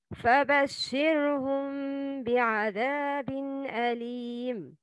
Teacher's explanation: the two lips don't come in complete contact. A ghunna with two beats is also done in this case.